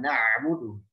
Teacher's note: ain mesti dijelaskan. Na'budu, ya, jangan na'budu, jangan hamzah, jangan juga masuk hidung